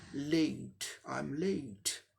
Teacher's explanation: Mixture ये diphthong में क्या होता है कि दो साउंड एक साथ आते हैं और इसमें पहले साउंड से दूसरे साउंड में ग्लाइड होता है, जैसे ए ग्लाइड, एक साउंड से दूसरे साउंड में ग्लाइड होके स्लिप करके जाता है।